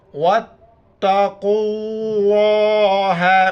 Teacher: چونکہ لفظ اللہ سے پہلے قوف پر پیش ہے، لفظ اللہ کو موٹا کر کے پڑھیں گے